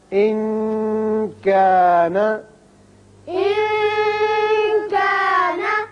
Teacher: کاف حروف اخفا میں سے ہے لہذا نون ساکن ہے، یہاں اخفا ہوگا